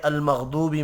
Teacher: یہاں پر سب سے پہلے واو مدہ ہے، واو ساکن ہو اور پچھلے حرف کے اوپر پیش ہو، جیسا کہ المغضوبی میں واو ساکن سے پہلے پیش ہے تو یہ جوف دہن سے ادا ہوگا، واو مدہ